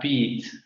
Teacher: la palabra beat, que tendríamos que pronunciarla con una vocal larga, anterior cerrada